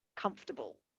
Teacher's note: we will often just remove the schwa altogether and just say comfortable